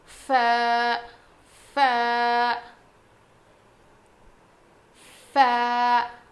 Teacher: سامنے کے جو دو دانت ہیں نا ہمارے, وہ نیچے کے ہونٹ پہ لگیں گے. ف, نیچے کے ہونٹ کے اندر کے حصے کو لگنے سے ف ادا ہوتا ہے.